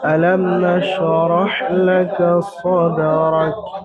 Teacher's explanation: তো এটা ইজহারে স্বাভাবিক, মিম সাকিনকে বিনা গুণায় জাহির করে পড়তে হবে